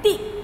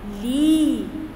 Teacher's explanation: छोटी ई में हम जल्दी से उच्चारण करते हैं ती, बड़ी ई में हम थोड़ा खींचते हैं ली